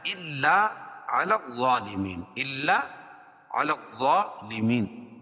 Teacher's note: کھڑا زبر قائم مقام الف مدہ کے، اس کو 1 الف کے برابر کھینچ کے پڑھیں گے، اور غا حروف مستعلیہ میں سے اس کو پر پڑھیں گے، لیمین.